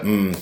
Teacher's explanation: V is voiced so when you're producing em that mmmm sound it is a nasal sound as we mentioned the place of articulation is bilabial use both your lips